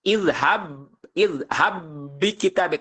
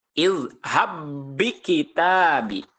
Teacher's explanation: karena diidghamkan maka ba sukunnya ini tidak dikolkolahkan ataupun tidak dipantulkan. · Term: idgham mislain